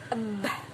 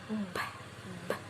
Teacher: So the sound bilabial is produced with both of our lips.